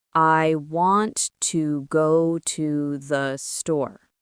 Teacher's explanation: When I say it naturally, I stress the important words. I, want, go, and store. The little words, to and the, they're much softer.